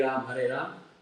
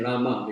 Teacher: in English we have this tendency that we chop off the final vowel